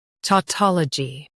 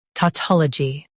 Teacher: US stress taw UK stress tol